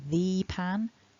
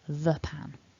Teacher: the word pan begins with a consonant we weaken our the